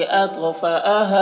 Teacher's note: अत्फ में तो को पुर पढ़ेंगे